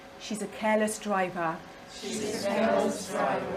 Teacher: all of these words have the stress on the first syllable